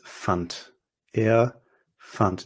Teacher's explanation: that D is pronounced like a T because it's a D at the end of a word